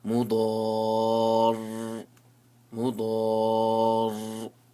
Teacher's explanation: So what I did over here is that when I stopped, I gave the ra a sukoon. But since it had a tajdeed, I'll prolong the sound of the ra.